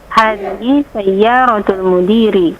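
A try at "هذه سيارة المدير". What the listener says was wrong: Mumtaz, mumtazah. Masya Allah, anti mumtazah.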